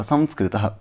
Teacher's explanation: तुम्बी फल की वीणा की ध्वनि के समान दंतमूल से उत्पन्न होने वाला अनुस्वार का उच्चारण वहाँ पर होता है।